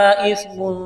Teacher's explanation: اس کو کھینچنا ہے، حمزہ کو سا کے ساتھ ملائیں گے، تا کو پڑھتے وقت زبان تھوڑی سی باہر نکالیں گے ، میم کے اوپر دو پیش تنوین ہے، تنوین کے بعد